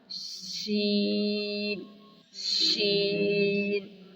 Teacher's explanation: زبان کا درمیان اور اس کے مقابل تالو کے ملاپ سے ادا ہوگا